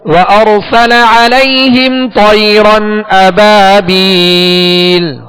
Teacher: طيرا مطا اور را دونوں کو پر کر دیں